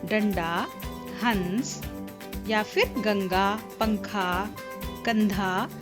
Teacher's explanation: तो वो जो बिंदी है वो उसे हम बिंदी नहीं कहते, अनुस्वार कहते हैं व्याकरण की भाषा में। जिस वर्ण का उच्चारण करते समय हवा केवल नाक से बाहर निकलती है उसे हम अनुस्वार कहते हैं।